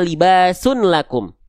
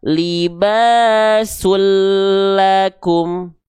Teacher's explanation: bunyi n ini dileburkan ke bunyi el. dibunyi dileburkan ke bunyi lamnya. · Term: idgham